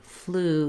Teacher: So I've rewritten that here for you so that you can visualize that round, tense oo sound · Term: oo vowel